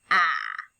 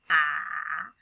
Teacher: we're saying the short letter the short vowel sound ah so first of all we know that our mouth opens up ah and our tongue goes flat to the bottom sometimes our tongue touches our teeth and it's a teeth tapper